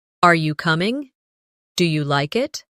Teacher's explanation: Another important element is intonation when asking questions. In English, our voice usually rises at the end of a yes or no question. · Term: rising tone